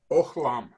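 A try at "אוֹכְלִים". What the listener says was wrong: Good job. Good.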